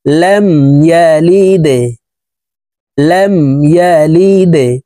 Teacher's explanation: দালকে নিচের দিকে ধাবিত করে ধাক্কা দিয়ে উচ্চারণ করতে হবে। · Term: কলকলার হরফ